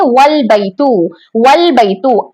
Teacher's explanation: वाव हर्फ आने की वजह से ये हमजातुल वस्ल यहाँ से गिर जाएगा, बल्कि लाम को हम वाव से मिलाकर पढ़ेंगे